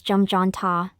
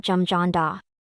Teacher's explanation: the hyut in the double consonant botchim neun hyut influences the following consonant digut, causing the consonant digut to undergo aspiration and sound like tiut to sound.